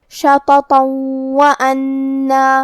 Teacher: اگر ہم یہ آیت کو اگلی آیت کے ساتھ ملا کے پڑھیں تو حرف الواو کلمت وَأَنَّ حروف الادغام میں سے ہے اور ادغام کا معنی ہے حرف کو حرف میں داخل کرنا. تو ہم یہ تنوین کو واو میں ملا کے غنہ اور تشدید کے ساتھ یہ حکم کو ادا کریں گے